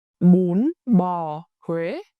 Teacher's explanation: mũ with the rising sharp tone, mả with the falling heavy tone, and quê with the rising sharp tone again and a sliding vowel